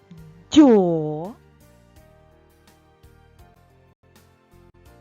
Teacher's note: звук д стає м'яким